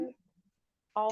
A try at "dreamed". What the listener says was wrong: Dreamed. T-nya kurang.